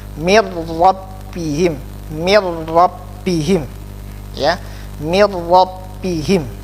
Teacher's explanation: mil langsung masuk, tetap masuk tetapi tanpa dengung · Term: bila guna